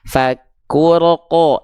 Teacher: jangan sampai keluar percikan nafas di huruf qafnya ya, jangan keluar percikan nafas.